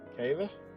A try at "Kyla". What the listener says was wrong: Kyla. Kyla? There's a Y there, not an A.